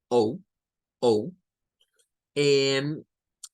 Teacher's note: Se lee como una mezcla de O y U. Nos dice como tirándole a una U más floja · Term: the long O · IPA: /oʊ/